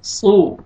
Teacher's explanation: صاد کو موٹا کر کے پڑھنا ہے تاکہ سین اور صاد مکس نہ ہو